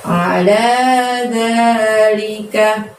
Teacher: Alanya, lanya panjangnya 2, dzanya juga panjangnya 2. A-nya itu jangan dibuka lebar mulutnya ya. Ain soalnya dari tenggorokan aja kita keluarkan suaranya